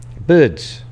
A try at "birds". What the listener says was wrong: No, I say birds with an R in there. You just say, you leave out the R on your... Yeah, say it like it.